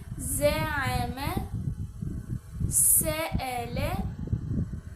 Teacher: زئی میں صحیح طرح سے سیٹی کی آواز آنی چاہیے۔